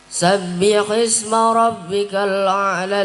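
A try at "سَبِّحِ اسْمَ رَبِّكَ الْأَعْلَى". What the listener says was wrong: A'la, tekan a'la saja. A'la, pertamanya hamzah, keduanya ain. Jangan sabbih isma rabbikal a'la, jangan gitu.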